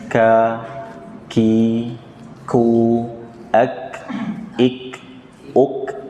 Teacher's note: kaf diantara sifatnya adalah hams, ya, keluar tapi dia syiddah. Jadi ada seperti suara aliran nafas.